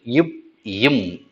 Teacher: இரண்டு உதடுகள் பொருந்துவதால் பிறக்கும் எழுத்துக்கள்